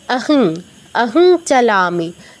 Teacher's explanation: নাসিকার প্রয়োগ হবে, অনেকটা দন্তন্যর মতো উচ্চারণ, কিন্তু পূর্ণ নয় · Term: ঞ